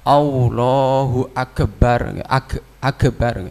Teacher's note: Ada juga yang membaca agak seperti qalqalah atau tawallud, Allahu Akbar, Akbar, seperti tawallud, bukan pakai tasdid, Akbar gitu, seperti tawallud, Akbar, seperti qalqalah.